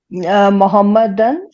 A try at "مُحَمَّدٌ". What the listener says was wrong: نہیں، اس کو الف وہاں بولیں گی ہی نہیں آپ. وہاں الف کی کوئی کام نہیں ہے، صرف بولیں گی محمدن.